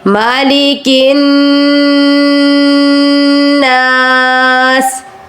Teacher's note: اب یہاں پر آپ نے کن کہتے ہوئے پھر نا سے دوبارہ شروع کرنا ہے، کیونکہ نون کے اوپر شد ہے، اس لیے نون کو دو بار ادا کرنا ہے۔ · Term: نون مشدد